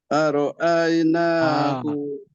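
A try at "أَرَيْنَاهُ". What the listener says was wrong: Ada ROI, ada hamzah ke dekat depan ro tu? Aroi.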